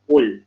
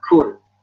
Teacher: Qul, ya, huruf qaf, jangan kul. Ku. Jangan ku. Kalau ku itu nanti ada hams.